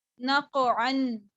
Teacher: قاف پر قلقلہ کیا، عین کو واضح کیا، نون کو باریک رکھا اور اینڈ پر تنوین کی